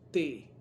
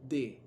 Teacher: la T es sorda, T, no hay, simplemente el sonido sale cuando usted produce la fuerza en el aire, al salir el aire, T.